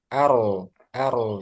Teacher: Secara bahasa takrir itu sesuatu yang berulang lebih dari sekali ya. Nah, khusus untuk ro ini getarannya itu nggak sampai lebih lah dari dua kali, nggak sampai ketiga antara satu sama dua.